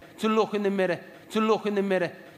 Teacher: k tends to get released into a velar fricative